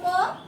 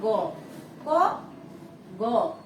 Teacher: ক, গ উচ্চারণ করতে সময় লাগে কম, এই জন্য এটার নাম হয়েছে অল্প প্রাণ।